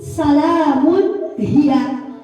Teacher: tanwin bertemu dengan ha, maka membaca tanwin tersebut harus sangat jelas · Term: idhar